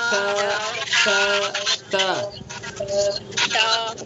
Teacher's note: زبان کی نوک کو ثنا علیہ کی جڑ پر لگائیں گے